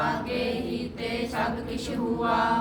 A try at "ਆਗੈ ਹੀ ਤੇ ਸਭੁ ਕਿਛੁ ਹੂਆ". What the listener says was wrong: ਆਗੇ ਨਹੀਂ ਲਿਖਿਆ ਆਗੈ